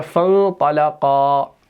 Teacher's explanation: तो अब आप देख सकते हैं ये जो बाब इन्फ़िआल है इसका शुरू वाला हमज़ा जो होता है ये हमज़तुल वस्ल होता है। तो हमने यहाँ पर फ़ा को बराह रास्त नून के साथ मिला दिया और इख्फ़ा किया